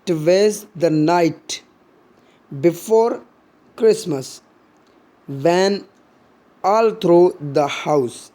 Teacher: जैसे कि टुवेस द, ये दोनों अनस्ट्रेस हैं, और नाइट इसमें स्ट्रेस दिया जा रहा है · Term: एनापेस्टिक टेंट्रामीटर